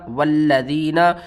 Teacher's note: واو لام زبر ول، لام زبر لا، ولا ذال یا زیر ذی، والذی نون زبر نا، والذین لام کے اوپر آپ نے سختی کرنی ہے تشدید کی وجہ سے